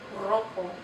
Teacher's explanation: So the letter ere, when it occurs at the beginning of the word, makes that trilled R sound.